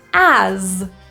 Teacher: this word is spelled with an S but we pronounce it with a zed sound so this is a voiced Z